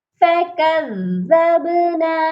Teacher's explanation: کاف کو ہم نے زال مشدد کے ساتھ ملانا ہے اور سختی سے ملانا ہے، اور زال کو جب ہم با ساکن کے ساتھ ملائیں گے تو با پر قلقلہ کریں گے